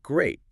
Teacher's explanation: If I say it flatly, great. It's neutral.